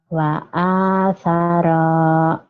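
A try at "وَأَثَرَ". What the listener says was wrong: wa athara pendek wa athara. Enggak panjang gitu.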